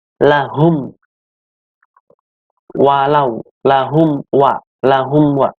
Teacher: Di sini ada huruf mim mati, yaitu mim adalah huruf syafawi, yaitu yang keluarnya dari bibir, bertemu dengan huruf hijaiyah, yaitu wawu, dibacanya jelas. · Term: idhar syafawi